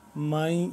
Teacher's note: مئی بیچ میں تھوڑا سا نون کی ٹچ آ رہا ہے، نون کا ہلکا سا امیزش سی، جسٹ امیزش جس طرح کہتے ہیں ہم، امیزش سی اس میں آ رہی ہے۔